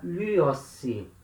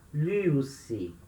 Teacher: Essa letra nu cai, vira lyossi. Como eu tenho uma letra que caiu, essa vogal omicron, ela tende a alongar. Vai alongar para um ditongo. Ditongo em Y.